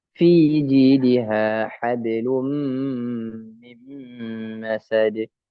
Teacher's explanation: Maka di sini mim berada di dua dua bibir. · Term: huruf mim